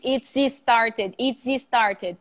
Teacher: the first S and the second S become one sound. You do not include a vowel. It's started or it is started.